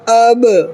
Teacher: ایسے اس میں جو ہے دونوں ہونٹ کو جو ہے سختی سے لگانا ہے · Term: قلقلہ